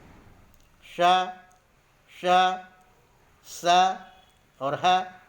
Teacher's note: अगर उसमें व्यंजन देखें श, श, स और ह, तो इनका उच्चारण रगड़ या घर्षण के कारण होता है।